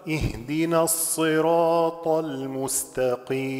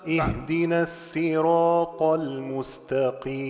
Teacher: طبعا عندنا الصراط الآن بالصاد الخالصة لكل القراء سوى قنبل وحمزة